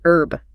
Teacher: In America, we generally don't pronounce the H. We say herb.